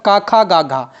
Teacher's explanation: क वर्ग कंठ से होता है। · कंठ से उत्पन्न होने वाले वर्ण हैं